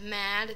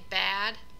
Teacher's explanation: the placement is all the same but the sound isn't sent through the nose